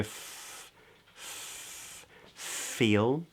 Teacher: the F in feel is pronounced with the lower lip touching the upper teeth